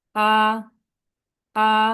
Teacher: এই ভয়েসটা, স্বরটা ফ্ল্যাট ভাবে যাবে।